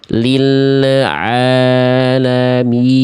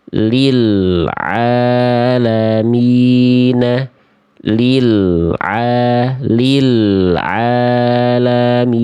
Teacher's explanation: jangan biarkan ada bunyi le di ujung pelafalan el.